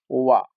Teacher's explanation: वकार का दंत और ओष्ठ दोनों से उच्चारण होता है